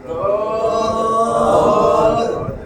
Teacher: দদ একদম জিহ্বার গোড়ার কিনারা উপরের মাড়ির দাঁতে যেন টাচ খায়